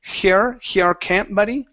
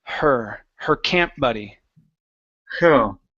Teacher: nice and light with the H, less pressure. Okay, so just like you're breathing,